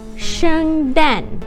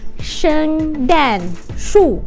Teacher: sharp tone going down falling falling these are the falling tones